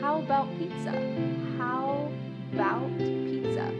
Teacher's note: The first a in the word about is gone. It's just missing.